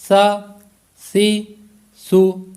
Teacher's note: سا میں سیٹی کی آواز پیدا نہیں ہو رہی۔ سا کا جو مخرج ہے وہ ہے کہ زبان کا سرا اور اوپر کے دانتوں کے اندرونی کنارے، وہاں سے یہ ادا ہوگا۔